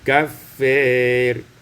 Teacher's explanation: Kemudian pada ayat yang ke-24, kaffarin, imalatu fathatil fa wal alif, dibaca imalah fathah fa dan alif maka menjadi kafir.